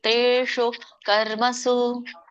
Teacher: ಮೂರ್ಧನಿ ಶ ಇದೆ, ಸೊ ನಾಲ್ಗೆ ಮೇಲೆ ಹೋಗಿ ಹತ್ಬೇಕು